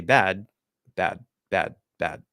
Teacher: But if it's a D and I say bad, bad, bad, bad, I just have to close up all the way, and then I still close everything off. You make sure the voice comes through a little bit. You don't drop the voice before you close